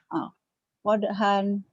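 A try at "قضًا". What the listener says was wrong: Gak ada yang panjang ya. Hentikan. Qadha. Jadi mad iwad ya. Jadi panjang. Dua fathah dibaca satu jika dihentikan.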